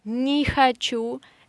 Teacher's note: не is in unstressed position, that's why we say и. And хочу we say а, not о, because it is again unstressed position.